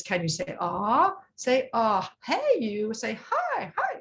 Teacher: she goes up to 700 hertz